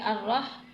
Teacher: الرح زبر رح، رح زبر رح، را پہ تجدید ہے تو اس لیے را کو، اور ہا پہ جزم ہے تو اس لیے را اور ہا کو ملا کر پڑھیں گے۔ الرح، اس ہا کو حلق سے ادا کریں گے۔